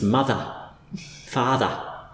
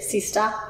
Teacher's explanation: So, in Australian English, just to make it a little bit more confusing, the schwa on the end of a word will often end up sounding quite a lot like ʌ.